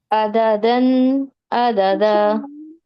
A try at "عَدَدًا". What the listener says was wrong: آئین کو آئین کی آواز نکالیے. حلق سے نکالیں. نہیں، آپ کی آواز پتہ ہے کیسے نکل رہی ہے؟ نہیں، تھوڑی سی حلق پر زور دیں، اپنی زبان کو نیچے اور پیچھے کی طرف پریس کریں، پیچھے کو پریس کریں جیسے ہم